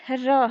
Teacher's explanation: र के उच्चारण में जिह्वा में, हवा में थोड़ी सी कपकपी होती। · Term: प्रकंपित व्यंजन